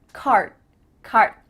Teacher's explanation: You're not actually making a D sound, but your mouth is making that shape. card card My tongue is flat against the roof of my mouth to make the D, but it's not coming out.